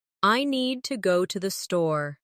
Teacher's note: Make need and store strong. And let to the be quick and light. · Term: rhythm